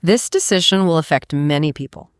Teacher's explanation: Let your voice drop on people.